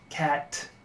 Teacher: In English, the ash is not considered a diphthong. It's a single sound.